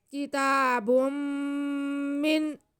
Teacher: کتا، آگے با پہ دو پیش کی تنوین ہے اور ساتھ میں میم آ رہا ہے، تو تنوین کے بعد میم آئے تو یہ ادغام کا قاعدہ ہوتا ہے۔ ہم با کو میم کے ساتھ ملا کے پڑھیں گے اور میم پہ غنہ کریں گے